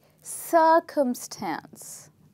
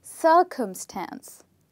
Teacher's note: circumstance has three parts to it. And in these three parts, the stressed part is the first part